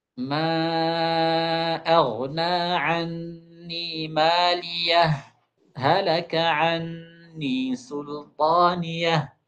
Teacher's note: Kata beliau wa kaifiyatul izhar ayyuqaf ala maliyah uqaifatan latifah. Nah, kita wakaf sedikit sekali, sedikit sekali, sebentar sekali kata beliau. Min ghairi tanaffus, tanpa ada nafas. Waznuha ka wazni sakt.